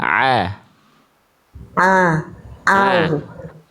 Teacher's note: Makhruj huruf ain dari tengah tenggorokan